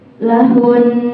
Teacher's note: suara Hun ditekan dan ditahan dua harakat